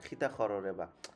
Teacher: আমাদের সিলেটে ককে খ উচ্চারণ করে